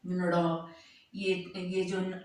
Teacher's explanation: ये मूर्धा और नासिका हो गया